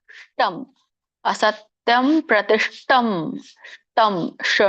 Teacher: ಷ ನೋಡಿ ಷ ನಾಲಿಗೆ ಹೊರಳಬೇಕು ಇಲ್ಲಂದ್ರೆ ಅದ ಶ ಅಂತ ಹೇಳಿದ್ರೆ ಅದು ಸಾಧಾರಣ ಆಗಿಬಿಡುತ್ತೆ ಶಂಕದಶ ಆಗುತ್ತೆ ತ